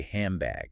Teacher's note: By closing your lips early, you accidentally force the air through your nose, creating an M sound. · Because your mouth wants to be efficient, your lips start closing prematurely while you're still trying to pronounce the N and the D from hand